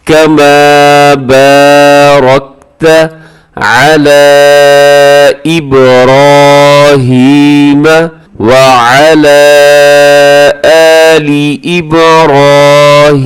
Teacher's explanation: اس میں را موٹا پڑھا جائے گا، باقی سب باریک پڑھے جائیں گے